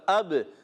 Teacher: حمزہ با زبر اب، با ساکن کلکلا کریں گے